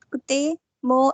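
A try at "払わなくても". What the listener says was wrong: We don't have double T over here, no? It's kutte. It's not kutte. It's kutte.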